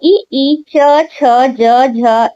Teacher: ई च छ ज झ यहाँ का उच्चारण होता है तालव्य से।